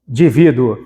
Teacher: E é nasal, tapa o nariz e fala indivíduo.